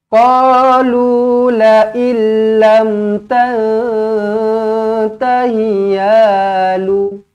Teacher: Nun kosong bertemu dengan ta ikhfa hakiki, dengungkan dua harokat.